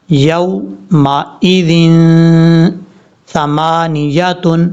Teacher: یہ جو سا ہے 3 ڈاٹس جس کے اوپر ہیں 3 نقطے، یہ بغیر سیٹی کے ساتھ پڑھا جائے گا۔ نارمل طریقے سے اس کا مخرج ہے زبان کا سرا اوپر والے جو 2 دانت ہیں ان کے اندرونی کنارے سے لگے گا تو یہ سا پڑھا جائے گا، اور نون کے بعد جو یا ہے یہ یا کلیئر کرنا ہے۔